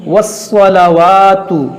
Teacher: ये देखिए स्वाद मुस्तालिया मोटा करेंगे